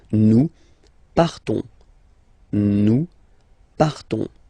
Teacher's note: So classic ending ONS, you don't pronounce the S, you just have this on sound nasal